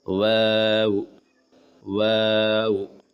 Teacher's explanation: ہونٹ کو گول کر کے واو ادا کرے، شروع اور آخر میں ہونٹ گول ہوں گے